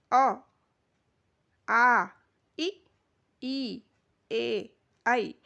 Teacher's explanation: तो पहला होता है अवृतमुखी। वे स्वर होते हैं जिनके उच्चारण करते समय होंठ गोलाकार नहीं होते हैं